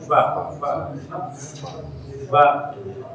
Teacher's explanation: fa itu gigi atas ke bibir bawah yang basahnya